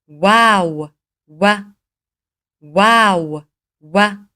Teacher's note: اس کی ادائیگی دونوں ہونٹوں کو گول کرنے سے کی جاتی ہے